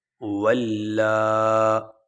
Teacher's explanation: ان دونوں لاموں کو ملا کر ایک پڑھا جائے گا۔ اس لام کا اس لام میں ادغام کر دیا جائے گا، ملا دیا جائے گا، تو دونوں لاموں کو ملا کر ایک لام بنا دیا جائے گا۔